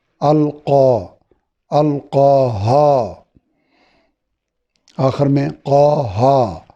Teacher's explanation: زبر کے بعد دونوں جگہ پہ الف ہے، یعنی الف مدہ ہے، کڑی زبر جتنا لمبا کرنا ہے